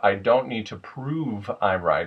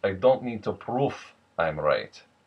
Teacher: the v sound at the end, it becomes f sound, a hard F. So instead of I don't need to prove I'm right, it becomes I don't need to prove I'm right.